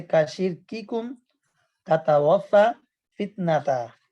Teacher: تا اور کاف دونوں میں صفت شدت کا اہتمام کیجیے ، ان کی رعایت کیجیے، جیسے کا شرککم تتوفا فتنہ تا،